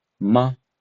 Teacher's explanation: The pronunciation of the short flat tone is almost the same as a flat tone but as a shorter and lighter. The short flat ton is only used at the end of a sentence or a word. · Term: neutral tone